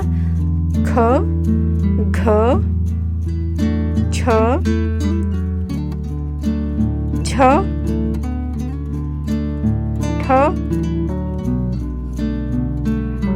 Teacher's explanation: ಇವುಗಳನ್ನು ಹೆಚ್ಚು ಉಸಿರಿನಿಂದ ಉಚ್ಚಾರ ಮಾಡುತ್ತೇವೆ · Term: ಮಹಾಪ್ರಾಣ ಅಕ್ಷರಗಳು